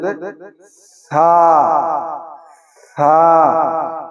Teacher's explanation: জিহ্বার আগা এবং সামনের উপরের সামনের উপরের দুই দাঁতের আগা। এই দুইটি একলগে লাগিয়ে দিতে হবে।